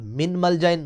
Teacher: نون ساکنہ کے بعد ملجا لفظ آیا اور میم یرملون میں سے آئی تو یہاں بھی ادغام ہوگا، نون چھپ جائے گی میم میں اور ادغام مع الغنہ ہوگا